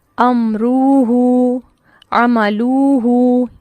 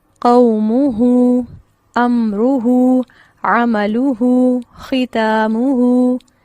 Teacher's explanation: جو حرکت ہے وہ نہیں کھینچی جائے گی، لیکن جو واو مدہ ہے اسے کھینچا جائے گا۔